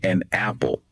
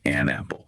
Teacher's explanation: This is all about consciously connecting words smoothly within sentences, grouping them in a natural way. So instead of saying an apple with that little pause, really focus on making it an apple. Smooth it out. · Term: sentence linking